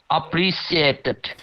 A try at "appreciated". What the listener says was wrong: Not sheated, appreciated.